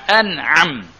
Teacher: Sebenarnya dia nun mati bertemu dengan ain, dia baca menzahirkan nun. Dia menzahirkan nun, menyatakan nun.